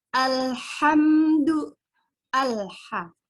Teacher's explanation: Alif lam bertemu dengan ha. Ha itu huruf qamariyah. Berarti lamnya dibaca secara jelas.